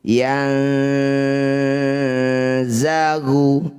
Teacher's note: zai makrijul hurufnya ujung lidah bertemu ujung dua gigi seri yang bawah ya. yang jadi saat dengung ujung lidahnya sudah menyentuh ujung gigi bawah yanzagu bainahum itu ya kita ulang lagi.